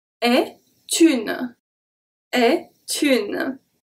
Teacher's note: So here we have a T. The T from est is going to be transferred to une. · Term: liaison